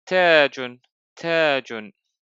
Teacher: There is a long vowel after the letter ta. It's the long vowel alif.